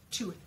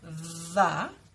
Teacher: So the difference is, th, like in tooth, my voice is off. Tooth. It's not vibrating. But when I do th, like in the, if you feel your throat, your voice will vibrate a little bit.